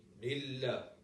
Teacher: you probably can hear just at the beginning a distorted sound because of the mim, because the mim has a ghunnah